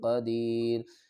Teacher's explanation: وقف کی صورت میں را کو ساکن پڑیں گے